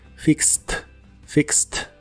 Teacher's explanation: se pronuncia con la i corta y no se pronuncia la e de hecho la Ed del final de esta palabra se pronuncia como t